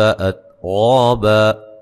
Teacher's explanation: تا کو ہلانا نہیں ہے اور تا کو باریک پڑھنا ہے